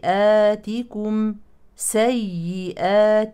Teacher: هذا الالف مسبوق بهمزه مفتوحه اذا هو مد بدل يمد حركتين ويلحق بالطبيعي سيئاتكم سيئاتكم مع اعطاء الياء المشدده النبر اذا نقرا نقرا نقرا